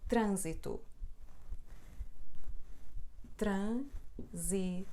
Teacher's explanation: Esta letra N, na verdade, não é um som N, como no início das palavras, por exemplo, não, nunca, ninguém. Mas este N é só um sinal de nasalidade da letra A. Portanto, isto, na verdade, é pronunciado assim, trânsito, ânzito, não é trânsito.